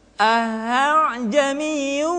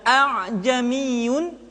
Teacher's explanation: Hamzah kedua dibaca dengan suara yang samar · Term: tashil